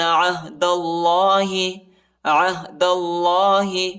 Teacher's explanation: دال کو لام کے ساتھ ملانا ہے اور اللہ کے نام کو جو ہے پر پڑھنا ہے